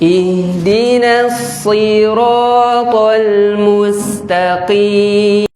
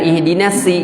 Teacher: sod ujung lidah ke gigi seri bawah, dan sod ini huruf tebal. Kalau dalam bahasa tahsin itu huruf isti'la.